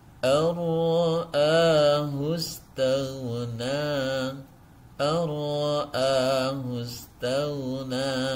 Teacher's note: Karena ada nun sukun bertemu dengan huruf ro. Cara membacanya memasukkan nun sukun ini ke dalam huruf ro seakan-akan tidak ada nunnya, dengan cara tanpa disertai dengan dengung. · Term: idgham bila gunnah